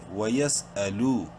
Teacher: لام واو پیش لو، واو مدہ ہے، لام کو ایک الف کے برابر لمبا کریں گے